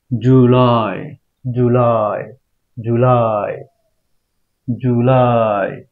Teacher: লাই এর উপর একটু স্ট্রেস দিতে হবে জু নরমাল করে বলবো লাইটা স্ট্রেস দিতে হবে কারণ এখানে একটা স্ট্রেসের চিহ্ন রয়েছে জুলাই হ্যাঁ জুলাই জুলাই জুলাই